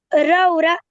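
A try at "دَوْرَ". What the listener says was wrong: ये दाल है, दाऊरा।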